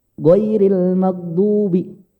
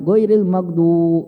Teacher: Waw sukun sebelumnya domah. Dibaca 2 harokat. Naiknya sekali aja pak. Turun lagi. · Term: mad asli